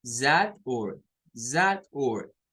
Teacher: Luego la UR nos forma otra sílaba, pero miren que esa U se convierte en un schwa.